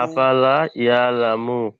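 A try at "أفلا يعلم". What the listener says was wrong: জি, আফালাটা টানবেন,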